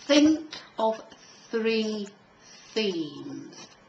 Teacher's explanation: the first line has think of three themes that's a voiceless th